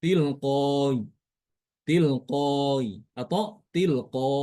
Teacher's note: dibaca antara huruf hamzah dengan huruf ya ya. Dan huruf alifnya boleh dibaca dua harakat ya.